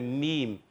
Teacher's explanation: میم کی ادائیگی ہوتی ہے، دیکھیں دونوں ہونٹوں کے خشک حصے سے